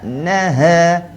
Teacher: Dia kena bunyi nipis sebab dia bukan huruf isti'alah. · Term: huruf ha